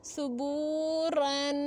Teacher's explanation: با پیش واو ساکن بو ہے تو حروف مدہ ہے، ایک الف کی مقدار تک کھینچ کے پڑھیں گے اور را کو موٹا پڑھیں گے کیونکہ اوپر زبر ہے، تنوین ہے تو غنہ کریں گے